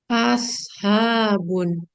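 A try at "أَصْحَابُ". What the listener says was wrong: Nah, dia lebih mirip ke sin kalau yang itu. Nah, coba di sin S-nya itu dibawa ke atas. Jadi kayak aus. Ya, kalau yang masih ingat, shot itu ujung lidah bertemu gigi seri bawah ya. Coba dirasa-rasa. Habun.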